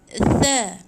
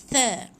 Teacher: Hujung lidah tu gigit di antara 2 gigi hadapan gunting kita tu